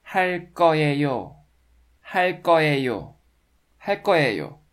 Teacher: because of the final l consonant in 할, the next 그 consonant in 거 block turns into 끄 sound.